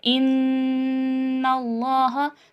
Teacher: زبان کی جو ہماری نوک ہے وہ ہمارے اوپر والے تالو سے لگ رہی ہے ان اللہ پڑھتے ہوئے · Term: نون مشدد